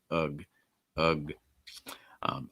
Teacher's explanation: that u you'll notice is a schwa sound so it's very reduced just kind of like letting the air out